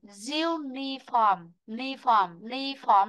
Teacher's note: Vì vậy trọng âm sẽ rơi vào âm diu, vị trí thứ nhất.